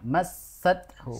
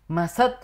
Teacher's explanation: didobelkan yang ditahan desisannya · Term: sin tasdid